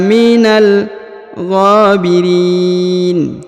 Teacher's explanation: huruf g dipanjangkan dua harakat karena di atasnya terdapat Alif kecil